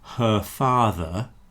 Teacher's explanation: So if I say her father, you don't hear the R. But the R will reappear if the following word begins with a vowel.